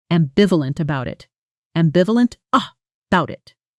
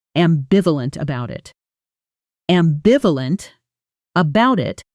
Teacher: Native speakers often blend ambivalent about into ambivalent-bout. Almost like the two words melt into one breath. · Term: connected sound